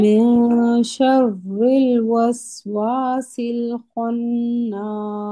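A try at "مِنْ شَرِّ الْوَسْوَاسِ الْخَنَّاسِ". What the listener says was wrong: आपके वाव पे होंठ भी नहीं गोल हो रहे, ठीक है। वस वसिल वस, वाव पे होंठ गोल।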